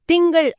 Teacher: ஆமா, திங்கள் வார்த்தையில இங்கு அப்படிங்கிற மெல்லின எழுத்துக்கு அப்புறம் க வருது. நீங்க சொல்லும் போதே கவனிக்கலாம், நாக்கு தொண்டைய ஒட்டி மேலெண்ணத்தை தொடும். அங்கிருந்தே நாக்க வேலை எங்கேயும் நகர்த்தாமலேயே கா ஒலியை எழுப்பிடலாம்.